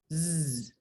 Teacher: Para pronunciar el sonido z, like zebra, tenemos que hacer vibrar las cuerdas vocales. Entonces, z es una consonante sonora.